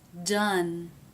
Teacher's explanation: You can see the tongue tip raised in the front, touching the roof of the mouth. This is an N.